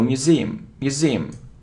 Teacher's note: Look, it isn't museum, no, museum. So you see that the stress is on the second syllable